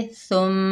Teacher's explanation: मीम मुशद्दद आ रहा है तो हम क्या करेंगे, एक अलिफ की मिकदार गुन्ना करके पढ़ेंगे